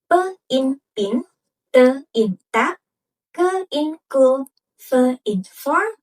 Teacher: There is no vibration, and this creates voiceless consonants. But when the vocal folds are slightly narrowed, the passing air causes them to vibrate. · You can try to place your fingers on your throat while saying it and won't feel vibration.